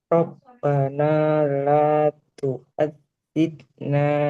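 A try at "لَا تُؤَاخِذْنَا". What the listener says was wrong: Bukan tuaji. Tuakhi. Tuakhizna. Hamzahnya dulu panjang. Kan hamzahnya fathah ya. Di depannya ada alif. khizna.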